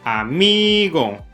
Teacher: pudiste deducir que la penúltima sílaba, mi, es la sílaba tónica y las otras dos, a y go, son las sílabas átonas o sin énfasis.